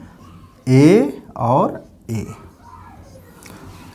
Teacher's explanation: कंठ तालव्य का मतलब हुआ जो कंठ और तालवे, तलवे दोनों, मतलब कंठ और मुंह के ऊपरी भाग से छूते हुए हवा बाहर निकलती है, वो कंठ तालव्य स्वर कहलाते हैं